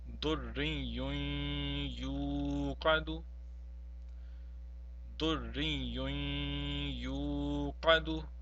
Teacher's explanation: we have a noon tanween which is followed by a ya. Hence, we have to prolong the noon tanween.